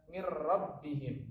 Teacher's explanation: nun sukun bertemu dengan huruf ro. Ro adalah huruf idgham bila gunnah. Maka cara bacanya adalah mir rabbihim, bukan min rabbihim.